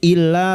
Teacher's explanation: Syafi'in illa masuk ke dalam alif yang bertasdid. Illa, lam alif 2 harakat kita panjangkan mat tabi'i